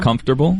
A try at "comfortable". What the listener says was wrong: That's the Stan Van Gundy. You pronounce every syllable in that. Most people say comfortable.